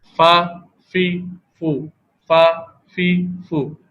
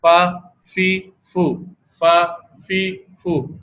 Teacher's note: فا حروف شفویہ میں سے ہے، یہ حرف نیچے والے ہونٹ کا اندرونی حصہ ثنایا علیہ کے کنارے پر لگنے سے ادا ہوتا ہے